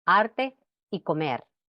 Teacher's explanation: En posición final de sílaba o de palabra, la R se articula como percusiva.